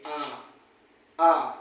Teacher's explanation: में जैसे बड़ा आ आता है जब आप बोलोगे आ आ मुख बहुत ज्यादा खुलता है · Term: विवृत